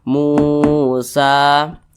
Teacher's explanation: belakangnya ada huruf mim berbaris domah dia karena berbaris domah itulah huruf mim dibaca panjang Mad Thobi'i panjangnya dua harakat atau kira-kira dua ketukan